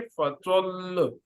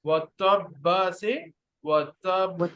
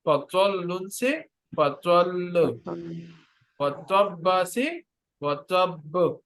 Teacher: پانچویں بات، شد پر وقف کرتے ہوئے اس کی حرکت کو ظاہر نہیں کیا جاتا مگر شد کی شدت کو برقرار رکھتے ہوئے دو حروف کی ادائیگی کے برابر وقت لگاتے ہوئے وقف کر لیا جاتا ہے